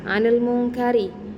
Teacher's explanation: Mungkarinya ini dihukumi dengan ro tarkik tipis karena ro-nya itu berharokat kasroh.